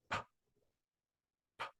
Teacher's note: Labial means lips. So you're closing your lips to start the sound, and then you're opening your lips to end the sound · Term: labial sounds